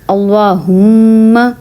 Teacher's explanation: یہ ہے میم مشدد، اس میں ہم پڑھیں گے اللہم، بھی ہم نے ناک میں آواز نکالی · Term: غنّہ